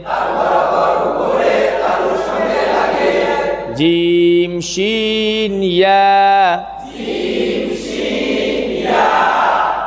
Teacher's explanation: খেয়াল করেন আপনারা যে জিম যেখান থেকে হইতেছে, শিন কিন্তু তার থেকে একটু সামনে, ইয়া আরো সামনে।